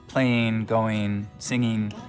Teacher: one of the things we start to hear in the Mountain West generally is ing endings pronounced as in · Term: ing endings pronounced as een